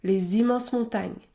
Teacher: Dans ce cas, le S se prononce Z, Z, les immenses montagnes. La liaison est obligatoire entre un adjectif et le nom qui suit.